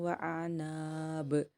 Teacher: الف مدہ پورا اپلائی کر کے با پہ خلخلہ کریں گے